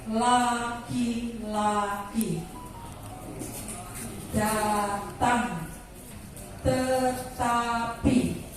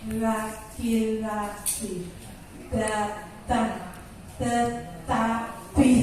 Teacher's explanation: Terbalik dengan tadi ketika kita mengucapkan, ketika kita berbicara atau bernyanyi dengan lidah posisinya di bawah. Tetapi ketika kita mengucapkan L, D, T, lidah itu harus menempel di ujung gigi bawah, gigi atas